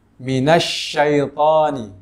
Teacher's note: Makhraj huruf shin itu terdapat di tengah lidah dengan langit-langit atas. Dan juga sifat huruf shin itu tidak terdapat di kedua bibir, sehingga ketika membacanya tidak perlu kita menggerakkan kedua bibir.